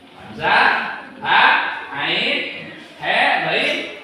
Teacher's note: disebut huruf halak karena dia makhrajnya dari tenggorokan, maka nun mati atau tanwin tersebut harus dibaca jelas. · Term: huruf tenggorokan